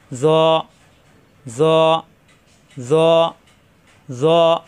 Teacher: জিহ্বার আগা দাঁতের আগায় লাগবে, নক্তা ছাড়া ত, উপরে একটি নক্তা আসলে হয়ে যাবে জ, জ মোটা হরফ, জবর আসলে আকার প্রকাশ পায় না, জ জ জ জ, মোটা হরফ।